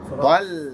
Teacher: Ta is heavy, lam is light.